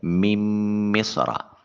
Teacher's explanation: نون اور میم قریب المخرج اکٹھے ہوئے، پہلا ساکن دوسرا متحرک، پہلے کا دوسرے میں ادغام کر دیا۔ میم کو براہ راست مصر کی میم کے ساتھ ملائیں گے۔